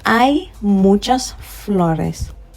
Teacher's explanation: So I'm saying I, as if the H does not exist.